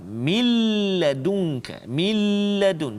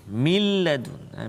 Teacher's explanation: Jadi nun hilang masuk dalam lam, tapi tanpa dengung. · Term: idgham bila gunnah